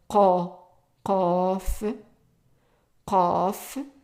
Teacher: It's like a Q, but also pronounced in the back of the throat.